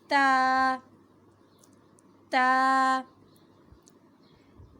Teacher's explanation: زبان کی نوک سامنے کے دانتوں کی جڑوں سے ٹکرائے گی